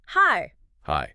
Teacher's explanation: High ends on a completely open vowel sound. It just floats away into the air.